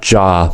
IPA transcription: dʒ